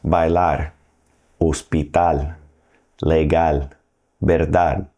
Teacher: That's other than vowels and N or S. The stress in these words will be on the very last syllable.